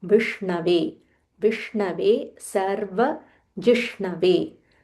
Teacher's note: There is a half murdanya sh. You have to roll your tongue, followed by n.